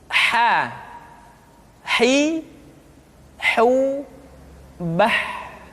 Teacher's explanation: Berikutnya adalah huruf ha. Huruf ha dikeluarkan dari tengah-tengah tenggorokan